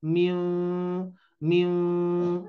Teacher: Cara bacanya suara mim terdengar samar karena dua bibir tidak merapat dengan sempurna.